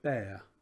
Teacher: the same weight as pear but without the aspiration on the P